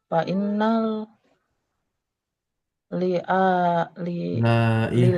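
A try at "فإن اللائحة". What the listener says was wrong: Laihata. Bukan lil. Fa innal laihata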